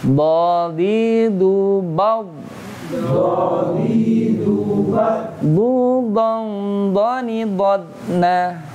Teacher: Dad ini bukanlah huruf qalqalah, jadi tidak memantul.